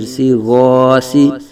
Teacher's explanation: ایک الف تک کھینچ کے پڑھیں گے، سین زیر سی غاسی، سین کے آواز باریک پڑھیں گے، سیٹی کی طرح تیز آواز نکلے گی